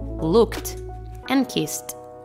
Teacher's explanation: in p f k or s voiceless consonants except for t we pronounce the ending e d as t